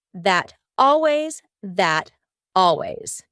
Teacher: when native speakers are talking quickly we link together words by making the final T change into a d